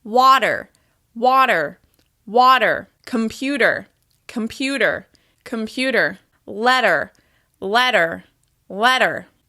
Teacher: The flap T is when the T sound converts into a soft D sound, when your tongue taps against the ridge of your mouth. The flap T happens between vowel sounds, after the R sound, and often after the N sound.